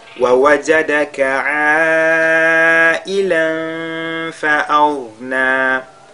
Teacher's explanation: la lettre ghayn est lue avec at-tafkhim